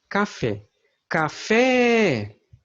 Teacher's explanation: quando nos pronunciamos essa palavra Nós abrimos mais a boca para pronunciar esta sílaba fé · na palavra café a sílaba fé é a sílaba tônica é a sílaba cá é a sílaba átona